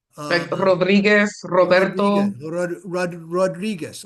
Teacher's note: So the re is different than the R. So if you're speaking Spanish, your R is in the front of your mouth.